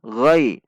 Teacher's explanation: Perhatikan sifat dan makhraj huruf ghain, dibaca tidak dengan membulatkan bibir, namun menaikkan pangkal lidah.